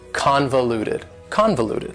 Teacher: four syllables and the stress is on the first syllable convoluted that second syllable again has that schwa sound that reduced vowel sound